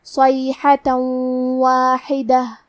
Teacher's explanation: ہا کی ادائیگی حلق کے درمیان والی حصے سے ہے، آخری میں تے پہ تنوین زبر ہے، پھر حرف الواو آتا ہے کلمت واحدہ. واو حروف الادغام بغنہ میں سے ہے، تو ہم یہ حکم کو غنہ اور تشدید کے ساتھ ادا کریں گے